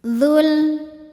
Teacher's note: Saat diwasolkan, madnya gugur, dzalnya dibaca pendek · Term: takhalus bil hadfi